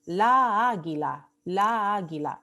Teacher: Pero le ponemos aquí el artículo masculino porque si le pusiéramos el artículo femenino como la águila, ¿no? La pronunciación tendría un enlace de vocal tónica. Tendríamos dos A tónicas.